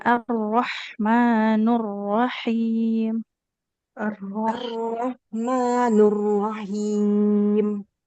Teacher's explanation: untuk huruf ro-nya hati-hati ya, getarnya tuh nggak boleh terlalu banyak. Kemudian harus tebal karena fathah.